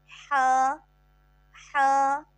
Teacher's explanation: ہا وسط حلق سے ادا ہونے والا حرف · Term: حروف حلقی